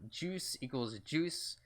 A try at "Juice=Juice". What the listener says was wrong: it's just juice juice you don't pronounce the equal